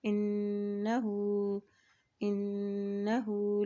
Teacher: जब भी नून के ऊपर शद आती है तो वहाँ पर हमेशा गुन्ना अदा किया जाता है। हा के उल्टा पेश को एक हरकत लंबा अदा करेंगे।